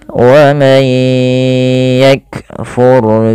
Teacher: ro-nya tebal karena di sini ro sukun didahului dengan fathah